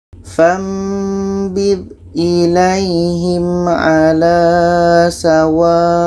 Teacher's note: Jadi bacanya wa ini kita panjangkan 6 harkat baru matikan hamzahnya